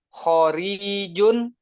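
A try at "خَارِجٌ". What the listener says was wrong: kho panjang. Khorijun.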